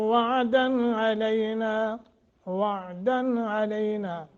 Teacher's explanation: یہاں غنہ نہیں کرنا بلکہ اظہار کرنا ہے، چونکہ آگے حروف حلقی میں سے عین ہے، علینا ایک سیکنڈ کی مد ہو۔